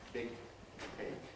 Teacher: We make the velar closure, switch the voicing off, keep the hold, and finally release it voiceless with aspiration. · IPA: [ˈbɪg̚ ˈkeɪk]